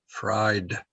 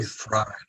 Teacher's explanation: it's what we call a diphthong you have two vowels next to each other i and e fried yeah refried eyed refried so it would